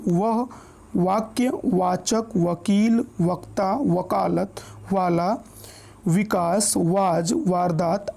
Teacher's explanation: वह का जब हम उच्चारण करते हैं तो हमारे दांत और ओष्ठ दोनों की सहायता से हम इसका उच्चारण करते हैं, इसलिए इसको हम दंतोष्ठ वर्ण बोलते हैं।